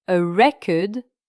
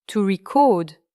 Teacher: A record, avec un accent sur la première syllabe, et to record a voice, accentué sur la syllabe finale.